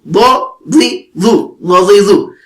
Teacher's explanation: دائیں طرف والی اوپر والی جو داڑیں ہیں ان کے ساتھ آپ نے زبان کا دائیں کنارہ لگانا ہے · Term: ضاد